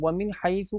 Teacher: وَمِنْ حَيْثُ، آپ یہاں پر دیکھیں گے کہ وَمِنْ حَيْثُ کو جب ہم پڑھیں گے تو نون ساکن ہے، اور نون ساکن کے بعد ہا حروف حلقی، تو اظہار ہے، غنہ نہیں کریں گے